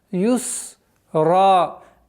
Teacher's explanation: При остановке на ра у нас аннулируется танвин, остается алиф. И в размере двух огласовок мы его удлиняем.